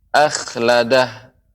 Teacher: Kha-nya lebih diberikan seperti garukan